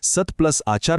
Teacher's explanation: कठोर त नंतर स्वर आल्यामुळे त्याचा मृदू द झाला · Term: तृतीय व्यंजन संधी